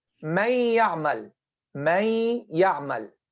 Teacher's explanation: The ghunnah of the noon still left.